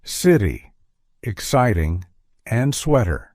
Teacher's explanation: In these cases, the T sound flanked by two vowels transitions into a D sound. Instead of a crisp T sound, you hear a softer D sound. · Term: T sounds into D sounds